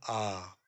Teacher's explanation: आ का उच्चारण करते हुए पूरा मुंह खुल जाता है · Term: विवृत स्वर